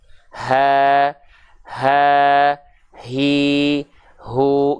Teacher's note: ha besar itu dilafalkan dari tenggorokan paling bawah atau sering kita sebut dia dengan pangkal tenggorokan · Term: H besar